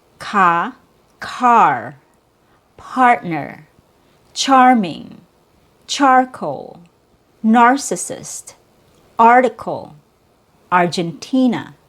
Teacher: short O. It's a relaxed vowel sound. You drop your jaw a lot. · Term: R controlled short O sound